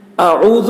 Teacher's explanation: اعوذ میں پہلے حمزہ ہے، پھر عین ہے، پھر ذال ہے، تو حمزہ کو حلق سے ادا کریں گے، شروع حلق سے، عین کو بیچ حلق سے، اور ذال کو بہت ہی باریکی کے ساتھ، ذال زبان اور آگے کا دانت جس کو ثنائے علیٰ کہتے ہیں، اس کا سرا اور زبان کی نوک، یہاں سے ذال ادا ہوتا ہے۔